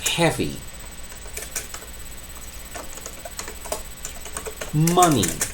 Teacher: Na verdade, não é que ela é longa. Quando o som I tenso aparece no fim de palavras, ele é I tenso, mas ele realmente é curto. Por exemplo, heavy, money.